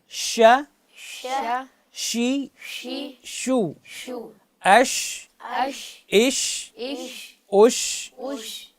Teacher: حرف شین زبان کے درمیان سے مقابل کے تعلق سے ادا ہوتا ہے